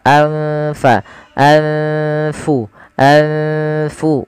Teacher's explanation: Cara membacanya adalah nunnya disamarkan kepada fa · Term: ikhfa